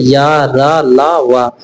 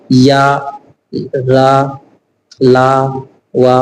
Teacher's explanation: जिन व्यंजनों का उच्चारण करते समय जीभ पूरी तरह से उच्चारण अवयव को स्पर्श नहीं करती, उन्हें अंतस्थ व्यंजन कहते हैं।